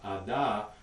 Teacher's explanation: the voicing actually starts before the burst is even released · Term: voiced stop